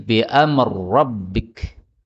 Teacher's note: Ra ketemu ra, ini boleh idgham menjadi bi amr rabbik